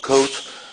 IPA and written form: kout (coat)